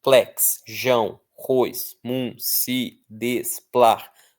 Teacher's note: Todas essas são oxítonas. Por quê? Porque a força está na última sílaba.